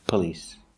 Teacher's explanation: We don't use the ah sound like stop and hot. We use the the short sound like cup and P. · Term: schwa